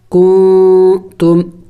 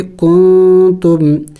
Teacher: ہم نے اخفا کرنا ہوگا، یعنی ناک میں آواز چھپانا ہوگا، نون کو ظاہر کر کے نہیں پڑھیں گے بلکہ نون کی آواز کو ہم نے چھپانا ہوگا ناک میں